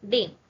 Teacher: e I sound is coming, that is a combination of two vowels, e and I, it's a combination of two vowels, that's why it's known as diphthong.